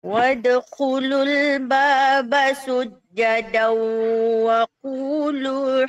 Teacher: Tanwin bertemu dengan waw. Bagi cukup gunnah.